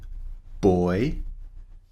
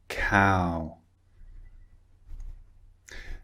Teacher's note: So these two vowel sounds are both two vowels squeezed together. As we've seen before, when we make these sounds, the shape of our lips and mouth changes in the middle of the sound.